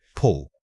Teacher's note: Your mouth should be slightly rounded but not overly stretched. The key here is keeping the ooh short like you are simply pulling something towards you.